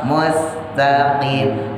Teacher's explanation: Musnya tipis, sinnya taruh bawah.